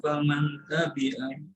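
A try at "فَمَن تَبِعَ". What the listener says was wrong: Faman apa famal? Nun sukun bertemu ta. Apa hukumnya? Ikhfa. Jadi hudal famau bukan faman ya.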